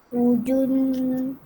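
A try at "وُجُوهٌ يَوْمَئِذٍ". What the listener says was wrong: Jangan jun sebab dia baris depan ni satu je.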